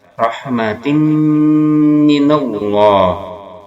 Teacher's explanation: memasukkan tanwin kasroh pada mim disertai dengungan 2 harakat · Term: idgham bi gunnah